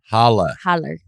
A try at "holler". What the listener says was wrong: There's an hard R. Holler.